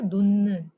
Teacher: 무슨 말이냐? 히읗과 니은이 만나면 히읗이 니은으로 아예 바뀌어버린다는 거예요